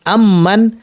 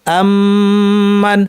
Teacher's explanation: মিমের সাথে মিম আসলে দুইটা মিমকে, যেমন আম্মান, এখানে আম মান একটা মিম শেষ করে নতুন করে একটা মিম শুরু করা হয় না। বরং দুইটা মিমকে একসাথ করে তাসদিদ যদি একটি মিম বানিয়ে লম্বা গুণনা করে পড়া হয় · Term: মিম সাকিনের ইদগাম